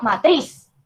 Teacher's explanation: el golpe de voz recae en la última sílaba, pero que no terminan ni en vocal, ni en N o en S, como por ejemplo matriz, ¿sí? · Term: aguda